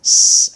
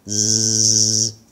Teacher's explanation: the s is unvoiced s and the z sound is voiced z it has a voice behind it so the this particular